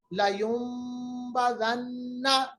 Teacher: اقلاب کا مطلب ہوتا ہے بدلنا، نون کی آواز کو ہم میم میں بدلیں گے، اور یہاں پر چھوٹی میم اسی چیز کو دکھانے کے لیے، ظاہر کرنے کے لیے بتائی گئی ہے اور لکھی گئی ہے۔